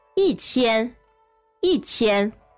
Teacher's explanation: it's the first tone becoming a fourth tone. So instead of 一千, we have 一千, 一千.